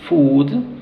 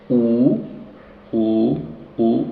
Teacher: los labios están redondos casi es cerrado u u en los dos casos Food y b muy bien